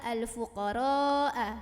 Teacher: Maka ra-nya ini wajib dibaca lebih dari 2, boleh 4, boleh 5 harokat.